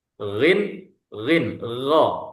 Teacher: Di tenggorokan bagian atas, yakni bagian pangkal lidah. Kalau lidah di bagian pangkal, di paling belakang di sini. · Ini jahr. Ya, suaranya tidak ada angin. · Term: huruf ghin